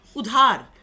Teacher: উটা একদম জাস্ট ছুঁয়ে চলে গেলাম আমরা, কিন্তু স্ট্রেস পড়ছে ধয়ের